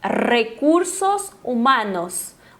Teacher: aquele tremendo a língua no céu da boca · o A sempre mais abertinho, eles não têm o que a gente tem em português